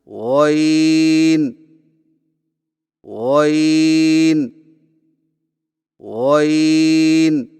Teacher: غین کی ادائیگی میں زبان کی جڑ کو تالو کی طرف بلند کرتے ہوئے موٹی آواز میں پڑھیں، یعنی غین غین غین.